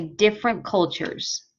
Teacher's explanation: So we don't pronounce that T because the next word starts with a consonant sound. We don't like to put too many consonants together.